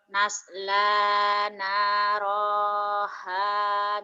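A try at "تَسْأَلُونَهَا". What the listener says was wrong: Tas. Tas atau bukan nas, eta titiknya 2.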